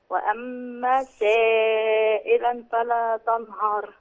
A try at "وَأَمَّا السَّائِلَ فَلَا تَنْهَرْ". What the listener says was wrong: السائلة مفيش تنوين يا حجة، فلا تنهر.